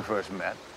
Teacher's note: First 结尾的 T 在这里要失去爆破不读。